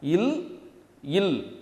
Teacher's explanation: இதுவே நீங்கள் பெரிய இலுக்கு அழுத்தம் கொடுக்கும்பொழுது அங்கேயும் நுனி நாக்கு தான், ஆனால் அழுத்தம் கொடுக்குறப்ப அந்த நுனி நாக்கு கொஞ்சம் மேலே போய் அன்னத்தோட நுனியை தொடாமல் அன்னத்தோட இடையை தொடும்